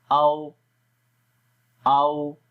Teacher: تو جب او کریں گے تو آخر میں ہونٹ گول ہو جاتے ہیں نہ تمام ملانے کی طرح، او او۔ ٹھیک ہے، اور اس کو نرمی کے ساتھ پڑھتے ہیں۔ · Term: واو غیر مدہ